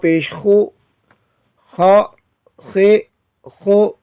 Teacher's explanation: اور خا جو ہے یہ زبر زیر پیش جو بھی حرکت اس پر آئے لیکن اس کو موٹا ہی پڑھا جائے گا۔ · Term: حروف مستعلیہ